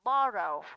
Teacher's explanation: borrow, trọng âm rơi vào bo